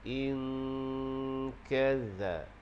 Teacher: Dengung, pastikan bunyi di bahagian pangkal lidah, di bahagian makhraj huruf kaf. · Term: ikhfa